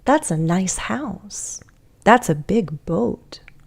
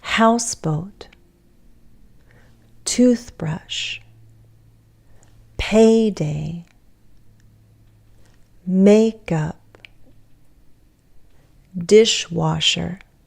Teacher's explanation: the pattern of stressing the first word in a compound noun